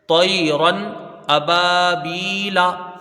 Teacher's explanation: طیرن، تنوین کے بعد حروف حلقی کا حمزہ ہے، تو یہاں پر اظہار ہلکی ہوگا، تنوین کو ظاہر کر کے بغیر غنہ کے جلدی پڑھیں گے